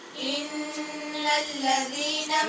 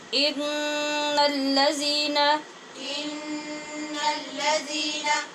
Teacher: یہاں نون پہ ہم نے غنہ کیا ہے نون کے مشدد ہونے کی وجہ سے